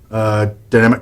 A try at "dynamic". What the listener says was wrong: dynamic, not damn it. Enunciate. It almost sounded like he said any of your own dynamic collections.